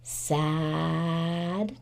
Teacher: do you hear how that Apple sound is really stretched out